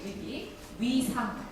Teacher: 우로 시작하셔서 이로 마무리 지으시면 되세요. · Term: 이중모음